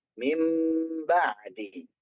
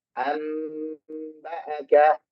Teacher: Cara pengucapan untuk iqlab itu kita yang diambil adalah merapatkan kedua bibir. Jadi jangan lupa untuk mingkem ya.